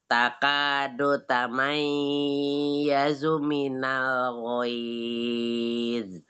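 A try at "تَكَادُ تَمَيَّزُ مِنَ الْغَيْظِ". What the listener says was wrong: Itu ya tasdid nggak usah lama-lama. Tamayyazu minal tamayyazu. Enggak, bukan tamai, nggak ada, ini cuma tasdid aja. Tamayyazu minal, langsung aja. bukan ikhfa, tamai, cuman tasdid aja.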